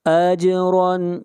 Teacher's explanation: جیم کے اوپر قلقلہ ہوگا، آواز کو ہلائیں گے۔